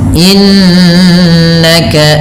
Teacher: Innaka pada bacaan innaka ada nun yang berharakat tasdid. Ini ditahan dengan bacaannya dua harakat dengan menahan bunyi nnya. Yang kita kenal dengan istilah yaitu ghunah.